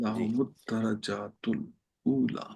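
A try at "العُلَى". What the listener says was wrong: ऊ नहीं, ऊ लंबा नहीं ना करना, हाँ, उला।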